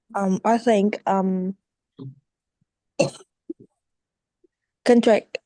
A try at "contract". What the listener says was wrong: Contract, don't say contract. The contract. We stress the very first syllable. Vietnamese students, Vietnamese people pronounce contract or contract. That is Vietnamese people. But the right English is not contract or contract. The right English is contract. Tract. Contract. Contract.